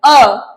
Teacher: अ का उच्चारण करते समय हमारा मुंह आधा खुला रहता है